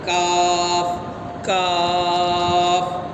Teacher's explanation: اب کاف کو باریک پڑھیں گے، قاف کے مخرج سے تھوڑا نیچے، مطلب باہر کی طرف، منہ کی طرف قاف کا مخرج جہاں نکلتا ہے وہاں سے تھوڑا سامنے اگر منہ کی طرف اگر باہر آئیں گے تو وہاں سے کاف نکلتا ہے۔